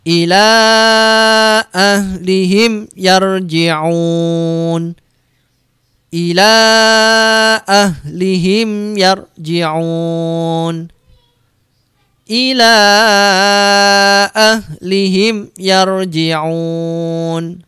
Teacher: Mim sukunnya, ya, mim sukun ketemu ya harus dibaca jelas, tidak boleh dipantulkan dan tidak boleh didengungkan. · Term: idhar syafawi